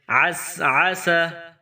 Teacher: گلے کے درمیان سے زور لگا کر عین کو نکالیں گے ، عین کو ادا کریں گے، عین کو پڑھیں گے، اس